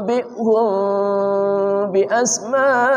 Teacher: Ikhfa artinya samar, syafawi artinya bibir. Samar di bibir beserta gunnah. Mulutnya dibuka sedikit sehingga terdengar suara samar. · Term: ikhfa syafawi